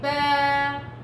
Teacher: صوتك ينقطع فوق بهدوء بأريحية عشان ما يصيرش عندك همزة في آخريتها، ما تقوليش با وتقطعي الصوت في الآخر، هذا خطأ، خطأ كبير بتوقعوا فيه.